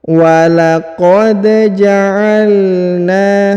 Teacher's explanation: Perhatikan huruf da dipantulkan karena berharokat sukun ya